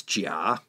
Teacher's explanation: It described tea as jia, third tone. That was the word for tea, jia.